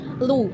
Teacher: vokal termasuk ke dalam vokal belakang karena bibir membulat